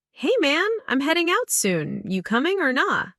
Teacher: Notice the dropped G in heading and coming and the use of casual phrases.